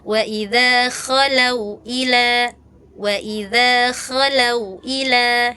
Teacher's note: Kalau K itu di ujung tenggorokan